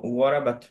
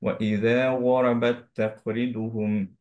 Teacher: আহ এইখানেও যেমন ইযা ওয়ারাবাত তাকরিদুহুম, যদি আমরা শুধু ওয়ারাবাত পড়তাম তায়ের হামসটা দিতে হতো, এখন হচ্ছে যে পরেরটার সাথে মার্জ হয়ে যাওয়ার কারণে আমরা পড়বো হচ্ছে ইযা ওয়ারাবাত তাকরিদুহুম, রাইট? আমরা হচ্ছে এখন আর হামসটা দিব না বিকজ মার্জ হয়ে গেছে